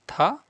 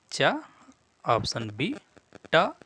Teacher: था आपका महाप्राण है, जबकि च, ट और द आपके अल्प प्राण है।